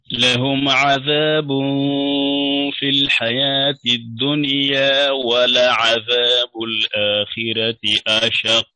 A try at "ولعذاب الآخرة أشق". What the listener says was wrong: فخم الراء، ولعذاب الآخرة راء، فخم الراء،